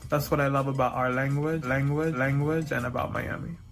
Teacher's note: in Miami English, you'll hear that dark L in places where you wouldn't hear it in other varieties